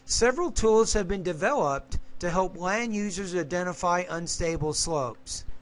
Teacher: Probably too many pauses in there, but when you have been developed, you have to put more stress on develop because that's the main verb. Less stress on have and been.